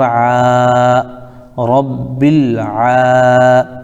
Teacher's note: کھڑا زبر الف مدہ کے برابر ہوتا ہے، اس کو ایک الف کھینچیں گے، جیسے عین کھڑا زبر آ، رب العا.